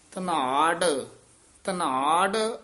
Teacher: ਇਹ ਧਨਾਡ ਡੱਡੇ ਲਾ ਜਾਂਦੇ ਨੇ ਢੱਡੇ ਉਚਾਰਨ ਕਰਨੇ ਨੇ